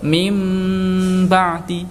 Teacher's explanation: atau tanwin bertemu huruf ba cara membacanya adalah mengganti bunyi tanwin dan Nun sukunnya dengan bunyi mim sukun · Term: iqlab